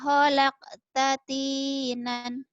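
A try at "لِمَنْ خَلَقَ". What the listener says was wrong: Kolkolahnya mana? Kholaq.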